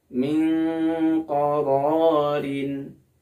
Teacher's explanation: karena dia masuk kepada huruf ikhfa ab'ad maka bunyinya menjadi Eng Min Qorin serta dia harus diunahkan sepanjang dua harakat teman-teman demikian